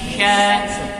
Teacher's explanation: Kalau shin tengah lidah nempel ke langit-langit. Sya. Shin ini ya?